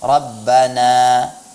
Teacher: ketika berhenti pada kata rabbana, seyogianya kita hanya memberikan panjang sekedar dua harakat saja.